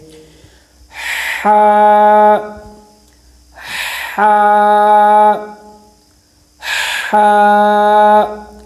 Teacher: اس کے اندر ہا بھاری آواز نہ ہے، یہ غلط ہے، اور نہ ہی خا کی آواز ہے بلکہ صاف ستھری آواز